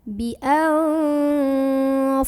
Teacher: jangan jadi hi-nya dipanjangin, tapi bunyi dengungnya yang dilamain · Jadi cara membunyikannya adalah berdengung dulu. Bunyi an-nya ditahan sampai bergetar halus ke hidung kurang lebih 2 harokat. Nah, catatannya adalah pada saat berhenti ataupun tidak berhenti pada kalimat ini, maka gunnahnya atau dengungnya tidak hilang, tetap ada. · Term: gunnah musyaddadah